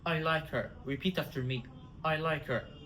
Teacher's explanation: We drop H of her. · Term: disappearing h